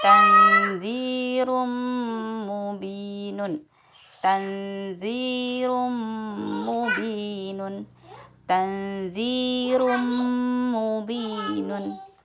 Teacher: Kenapa di mim bertasydid juga saya dengungkan padahal tidak ada tanda nun sukun atau tanwin di situ? Karena mim bertasydid dan nun bertasydid itu dibaca dengung.